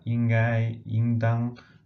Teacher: The first is ying in the first tone, and the second is ying in the fourth tone.